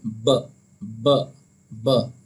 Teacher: और बा का जो मखरज है वो है बा। दोनों होठों के तर कहते हैं गीले गीले हिस्से से अदा किया जाता है